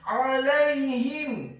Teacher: huruf ain-nya ditekankan keluar dari tenggorokan bagian tengah